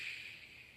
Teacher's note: For S, it's kind of pointing at the front at my alvear ridge. And then for sh the middle of my tongue kind of curls up a little bit, goes a little further back